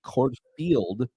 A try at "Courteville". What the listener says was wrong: There's no F in it. But you're pronouncing it. It's just like when you say thank you.